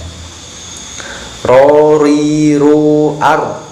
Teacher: Makhrajnya huruf ro adalah ujung lidah terkena gusi, agak ditekan, jangan sampai kebanyakan getarannya.